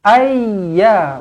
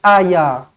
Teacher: Ayya tekankan ya di sini kerana ya ini ada sabdu di atasnya. Jadi kena ayya, tak boleh ayya, salah.